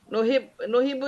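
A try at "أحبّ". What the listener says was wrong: Uhibbu. Pakai hamzah. Uhibbu.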